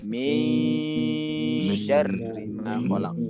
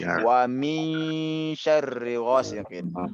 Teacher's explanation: disamarkan antara nun dengan shin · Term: ikhfa